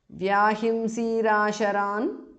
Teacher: visarga changes to repha there